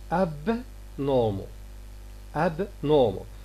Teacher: we release the air for b and then we go to the production of ne